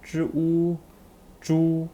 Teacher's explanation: j sound with the u final first tone